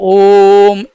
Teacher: जिनका उच्चारण करने में 3 मात्रा का समय लगता है। 3 मात्रा का समय लगता है, ऐसे स्वरों को प्लुत स्वर कहा जाता है। या इनका उच्चारण करने में जो श्वास या प्राण की मात्रा होती है वो ह्रस्व स्वर से 3 गुनी निकलती है।